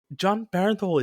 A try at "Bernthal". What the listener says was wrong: Not exactly. You added an extra E in there. Bernthal.